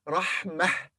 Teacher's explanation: If we read this alone, it will be Rahmah, H at the end, Ha at the end, Rahmah.